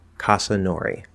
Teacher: we naturally have a schwa there at the end of casa